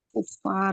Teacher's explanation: Ro sukun didahului fathah itu jadi tebal